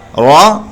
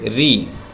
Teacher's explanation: रा पे ज़ेर हो तो रा को बारीक पढ़ते हैं। यानी रा पे ज़ेर होता तो पढ़ते री रॉ।